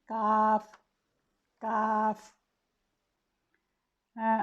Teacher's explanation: जब ज़बान का पिछला हिस्सा यानी जड़ तालु के सख्त हिस्सा से टकराती है तो काफ की अदायगी होती है। ये तरकीक से पढ़ा जाने वाला हर्फ है और ये अपने मखरज से आसानी से अदा होता है।